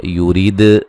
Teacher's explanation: وَمَن نون ساکن کا ادغام مع الغنہ ہے. یورید دال پہ قلقلہ کریں گے, را کو باریک پڑھیں